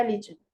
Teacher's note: अब देखिए मैंने बोला रिलीजन, अब देखिए ली आपको ज्यादा क्लियरली सुनाई दे रहा होगा, रिलीजन। तो here is stress on second syllable.